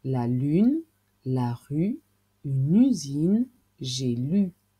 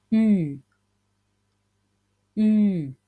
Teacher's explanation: Le son U, qui s'écrit avec la lettre U, les lèvres en avant, la langue relevée